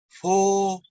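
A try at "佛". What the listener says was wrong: Oke, belakangnya jangan turun Pak. Jadi handle supaya stabil. Tinggal di maintain, belakangnya jangan turun.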